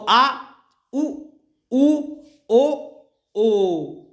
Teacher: पश्च स्वर जिसमें हमारी जीभ का पीछे का भाग सक्रिय रहता है